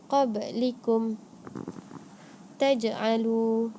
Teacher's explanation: qalqalah sughra ni dia mestilah dibaca secara lantunan yang rendah. Dia tak kuat.